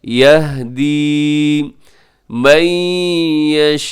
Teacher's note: यहदी मन यशाउ, यहाँ इदगाम हो रहा है तनवीन के बाद, नून साकिन के बाद यहाँ या है यरमलून का, तो इदगाम, और जो मद है ये मुत्तसिल है, वाजिब 4 सेकंड तक लंबा कीजिएगा।